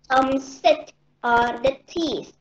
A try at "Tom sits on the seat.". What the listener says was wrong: Okay, sits. Sits. Don't forget the S at the end.